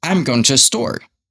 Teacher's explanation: Store will be something I emphasize so you can understand it.